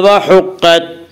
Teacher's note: قاف کو پر پڑھیں گے۔ قاف حروف مستعلیہ میں سے ہے۔ حروف مستعلیہ 7 ہیں جن کا مجموعہ خصہ ضغط قز ہے جو ہمیشہ ہر حال میں پر پڑے جاتے ہیں۔